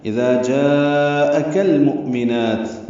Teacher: مؤمنات میں حمزہ ساکن جھٹکے سے ادا ہوگا، نون کو 2 حلقات لمبا کریں گے۔